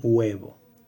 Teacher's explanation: Y el sonido wow, que es esta U semiconsonante, va a provocar en muchos casos la aparición de una consonante fricativa bilabial o velar. Por ejemplo, tenemos la palabra huevo, que se inicia con este diptongo, y probablemente en algunas realizaciones puedan escucharse que aparece una consonante como huevo.